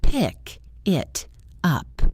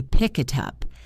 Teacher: The sounds blend together. The K at the end of pick connects to the I in it, and the T at the end of it connects to the U in up. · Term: connected speech, connect words together